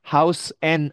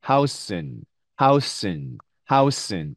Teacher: house 다음에 그냥 네, 이렇게 n 발음만 받침을 하는 거죠